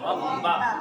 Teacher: را کے اوپر زبر ہے تو را کو پر پڑھیں گے. پر کا مطلب موٹا. آواز کو تھوڑی موٹی کر کے پڑھیں گے. جیسے ربا نہیں پڑھیں گے، ربا پڑھیں گے.